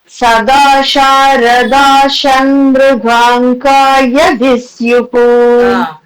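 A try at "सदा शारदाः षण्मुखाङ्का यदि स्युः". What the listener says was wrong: சதா சாரதாஹா இருக்கு, அங்க வந்து ஆஹா சொல்ல வேண்டாம், இஷ் சவுண்ட் லைட்டா போட்டா போதும்.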